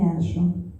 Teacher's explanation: En la voz me hallo, con doble L que suena Y